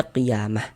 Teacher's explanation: Tapi kalau misalkan kita berwakaf di huruf ta marbuthah, maka dia menjadi huruf H. Maka ini kita baca qiyamah.